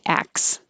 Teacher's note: If it's plural, we skip the T completely and say acts.